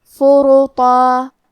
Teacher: ہم طو کو اور مد الف کو دونوں کو موٹی آواز میں پڑھیں گے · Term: تفخیم